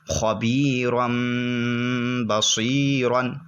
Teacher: تنوین اور نون ساکن کو چھوٹے سے میم سے بدل دیں گے، جیسے کہ اوپر آپ دیکھیں الف کے اوپر چھوٹا سا میم لکھا ہوا ہے، خبیرم۔ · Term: اقلاب